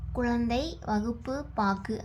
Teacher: முதலிலும் இடையிலும் வரும்பொழுது முழுமையாக ஒளிக்குது. சொல்லின் இறுதியில வரும்பொழுது ஒரு மாத்திரைக்கு பதிலாக அரை மாத்திரை அளவுதான் ஒளிக்குது. கு, சு, டு, து, புரு ஆகிய ஆறு வல்லின உகரங்களும் சொல்லின் இறுதியில் வரும்போது ஒரு மாத்திரைக்கு பதிலாக அரை மாத்திரை அளவே ஒளிக்கும். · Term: குற்றியல் உகரம்